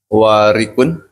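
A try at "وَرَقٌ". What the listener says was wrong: Ah, harakatnya salah. Warikun. Harakatnya diubah, hurufnya sudah benar.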